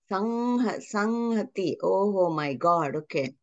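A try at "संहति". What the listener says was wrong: Samhati is not correct pronunciation. There should not be Oshta touch, should not be there. Ma is different and Anuswara is different. While pronouncing ma, you will saying like your movement will be appearing in your Oshta, some. That is ma, not Anuswara.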